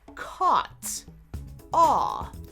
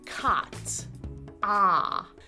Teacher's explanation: for most people on the East Coast, including Boston, the sounds of aw and ah are very distinct